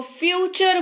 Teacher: तो यहाँ पर टी का उच्चारण च के तौर पर हो रहा है, जिसकी वजह से ये बन रहा है फ्यूचर।